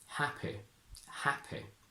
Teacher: in traditional RP, they use the I in sit